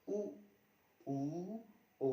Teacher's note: हमारा मुख है पुरी तरीके से वृत्त बन जाएगा वृद्ध बन जाएगा सर्कल बनेगा जैसे यू यू ओ इस तरह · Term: व्रत मुखी